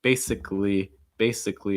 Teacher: notice that the second a is not usually pronounced when you say that so usually going to cut it go right to the l